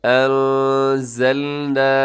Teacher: یہاں نون ساکن کے بعد زا حروف اخفا میں شامل ہے، اب یہاں اخفا کیجیے گا